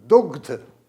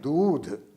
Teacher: ग का लोप हो गया है और दैक पर बड़ी मात्रा लग गई है।